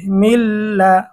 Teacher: তো নুন সাকিন বা তানবিনের পরে যদি ঈদগামে বেলাগুন্নার 2 হরফের কোন হরফ আসে, গুন্নাহ ছাড়া মিলিয়ে পড়তে হবে। এখানে নুন সাকিনের পরে বেলাগুন্নার হরফ লাম এসেছে, গুন্নাহ ছাড়া মিলিয়ে পড়তে হবে।